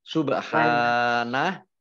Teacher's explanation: ba sukun, bacaan qalqalah atau memantul.